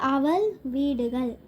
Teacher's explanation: பொதுலகரம் நாக்கு மேல் அன்னத்தின் நடுவின் தொடும்.